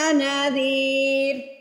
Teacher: ذال کو ادا کرتے وقت آپ کی زبان اوپر والے 2 دانتوں کے سروں سے لگنی چاہیے، یا سیدھے الفاظ میں یہ سمجھ لیجئے، آپ اپنی زبان اگر دانتوں کے درمیان میں رکھیں گے تو جو ذال ہے وہ سافٹلی ادا ہو جائے گا، نرمی سے ادا ہو جائے گا۔